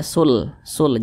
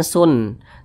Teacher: hukumnya adalah idgham Bila Ghunnah dibaca tidak berdengung